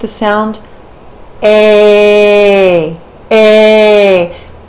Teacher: we take a short ah plus e, and we get the sound a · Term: palatal diphthongs